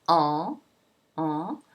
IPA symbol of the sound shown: ɑ̃